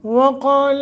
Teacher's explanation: واو کو موٹا کریں گے، واو کا مخرج دونوں ہونٹوں کو نہ تمام گول کرتے ہوئے ادا کرنا، یہ ہے واو کا مخرج۔